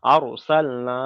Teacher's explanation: র সাকিনের পূর্বে জাবার এসছে, তাই র সাকিনটাকে পুর করে পড়লাম